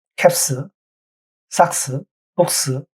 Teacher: 무성음과 S가 만났을 때는 스로 발음을 합니다.